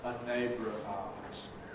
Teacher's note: Schwa R can coalesce into a syllabic R, a neighbour of ours. Syllabic R can lose its syllabicity before another vowel